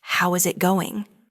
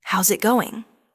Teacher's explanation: The final G in going often softens. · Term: connected speech